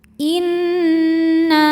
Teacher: dihukumi dengan ghunah musyaddadah atau wajibul ghunah sebab nunnya bertasdid maka cara bacanya didengungkan jadi kita tahan bunyi n-nya kurang lebih dua harakat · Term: gunnah musyaddadah